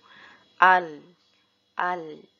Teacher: Huruf lam ketika sukun jangan sampai terdengar mantul.